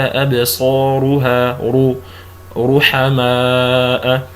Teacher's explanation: فإذا كانت الراء مضمومة مثلا كقوله تعالى أبصارها رحماء، هنا تفخم. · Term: التفخيم